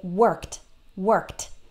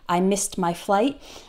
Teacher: the IDI sounds like a t when the last sound in the word is unvoiced so s is an unvoiced sound there's no vocal cords it's